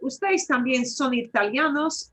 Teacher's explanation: You get it from the way your voice goes up, that it's a question.